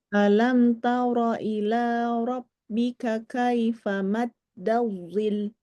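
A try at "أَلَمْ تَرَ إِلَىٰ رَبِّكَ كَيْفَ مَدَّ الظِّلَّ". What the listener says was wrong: Lamnya dinaber. Maddazil. Dinaberkan lamnya.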